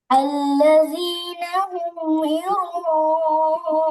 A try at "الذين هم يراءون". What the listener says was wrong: জিম না, এটা জিম আর জালের মধ্যে পার্থক্য, জাল জের জি, তাহলে আল্লাযীনা হুম, হুম গুণা হবে না, আল্লাযীনা হুম ইউরাউন